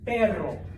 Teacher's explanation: you make the front of your tongue flap up and down really fast, okay? The technical term is a trill, all right?